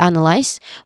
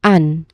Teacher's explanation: analyze which has three syllables. The stress is on the first syllable an. pronounce an unclearly here because it's our stressed syllable like the word ant without the letter t in the end.